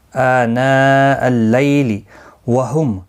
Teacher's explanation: میم ساکن کے بعد یا آیا ہے، اظہار شفوی ہوگا، غنہ نہیں کریں گے